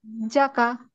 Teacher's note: হাজ্জা, জি, কাফ জবর কা, কাতে টান দেওয়া যাবে না, এটা হাজ, হরকত, হরকতে টান দেওয়া যাবে না।